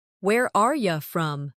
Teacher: In fast speech, are you often sounds like are ya.